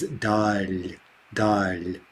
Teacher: The noun is dal, dal, with a soft L, and it simply means the distance, right?